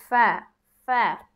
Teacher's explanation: 15 নং মাখরাজ। নিচের ঠোঁটের পেট সামনের উপরের দুই দাঁতের আগার সঙ্গে লাগিয়ে, অর্থাৎ আমাদের নিচের যে ঠোঁটের মাঝখান বরাবর যে জায়গা, সেই জায়গাটার সাথে এই যে এই দুই দাঁত হ্যাঁ ফা ফা উচ্চারণ হবে ফা ফা।